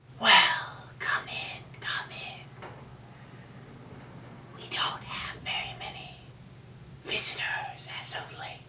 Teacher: what I mean by breathy is you are just exhaling a lot of air while you're talking